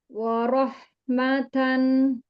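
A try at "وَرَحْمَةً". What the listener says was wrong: Tapi wa-nya jangan jadi tebal. Bukan wa. Wa. Wa.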